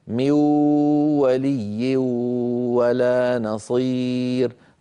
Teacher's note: أدغم لكنه ما أتى بالغنة. كل الصوت عم يأتي من فين؟ من الفم. ها أنا الآن أسد أنفي وأفتحه والصوت لا يختل. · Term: من غير غنة